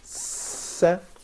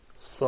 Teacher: swad is probably closing your mouth more and releasing from the top of your mouth. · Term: emphatic